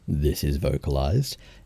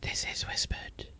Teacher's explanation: it's the same airflow, it's the same mouth and throat movements, it's just without effectively activating your vocal cords.